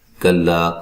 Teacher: کاف کو باریک پڑھیں گے اور کاف کو لام سے سختی سے ملائیں گے۔ لا پہ جو مد ہے یہ مد جائز ہے، الف مدہ کے بعد حمزہ دوسرے کلمہ کے شروع میں ہے۔